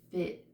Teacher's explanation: Now our short I sounds go somewhere close just raises up but doesn't go forward.